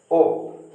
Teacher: ये ओ आ और उ से मिलकर के बनता है। तो आ बोला जाता है कंठ से और उ बोला जाता है ओष्ठ से। तो कंठ और ओष्ठ दोनों मिलकर के बन जाता है कंठोष्ठ।